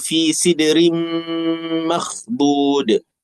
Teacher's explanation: Dengung idgham ma ghunnah. Dengung dua harakat. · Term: idgham ma'al ghunnah